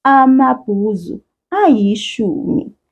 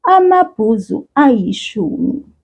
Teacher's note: if we are in a situation where we are having two vowels right next to each other, we separate those vowels here with the sound y, the letter Y.